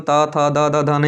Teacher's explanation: जीभ जो होगी हमारी जीवा होगी वो दांतों में जाकर टकराएगी